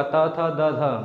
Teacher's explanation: दंत में देखिए जीभ हमारे दांत को टच करता है